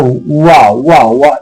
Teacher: ऊ प्लस आ मिला के बनता है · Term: अर्ध स्वर